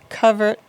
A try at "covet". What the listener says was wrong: You said covered.